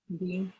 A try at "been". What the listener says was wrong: Is pronounced bin. Like a very short I sound.